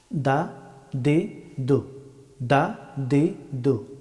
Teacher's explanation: দাল হরফটি উচ্চারিত হয় জিহ্বার অগ্রভাগ এবং সামনের দুই দাঁতের গুড়ি